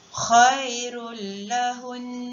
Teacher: Baiklah, sekarang kita lihat cara bacaan ketika waqaf pada nun syaddah ataupun nun yang bertanda sabdu. Cara bacaannya adalah dengan membaca dengung dengan kadar 2 harakat.